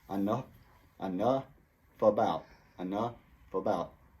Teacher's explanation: And the F sound connects to the from about.